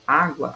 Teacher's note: a divisão dela é á gua certo são duas sílabas então nós temos a a sílaba tônica na penúltima sílaba certo porque gua é a última e a é a penúltima